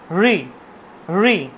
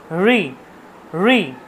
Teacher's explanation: ঋটা উচ্চারণ জিহ্বাটা ভাজ ঠিক উপরের দিকে চলে যাচ্ছে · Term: মূর্ধা